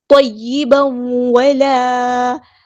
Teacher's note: یہ تا نہیں تو، تو موٹا ہیوی لیٹر ہے ، طیبا ولا، الف مد آیا تو مد اصلی کریں گے،